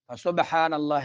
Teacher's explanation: سبحان اللہ قلقلہ ہو رہا ہے، با پہ قلقلہ ہو رہا ہے، اور لفظ اللہ کو اوپر پڑھیں گے.